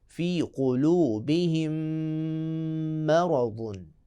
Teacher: میم پہ شد ہے، ادغام کی صورت میں اس میں غنہ بھی کریں گے